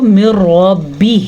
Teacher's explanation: بلا غنہ کا مطلب یہ ہے کہ آپ غنہ نہیں کر سکتے، ہم اس کو من ربہ، را کو پر پڑھیں گے کیونکہ را پہ زبر ہے